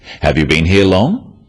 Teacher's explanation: questions that start with have you are yes no questions so they have a rising tone